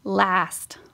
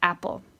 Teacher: Did you hear how long I said the ah sound? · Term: long vocal